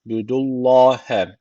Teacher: Allah lafzı burada kalın okunacak çünkü öncesindeki harf üstten bağlanıyor.